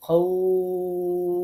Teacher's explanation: এই যে খৌফ, এই যে টানলাম, এটা হচ্ছে মাদ্দে লিন